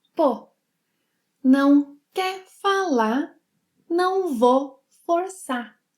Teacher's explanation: she omits the final R and U sounds here